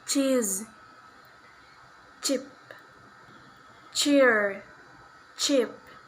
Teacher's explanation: voiceless palatal affricative sound ch